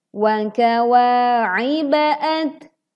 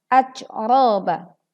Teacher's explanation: Tidak dibaca terlalu menghembuskan angin yang berlebihan sehingga terdengar menjadi seperti huruf C